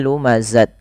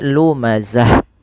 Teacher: Ta marbutah apabila berada di akhir bacaan ketika kita waqaf atau berhenti, maka ta ini diganti bunyinya menjadi huruf ha yang dimatikan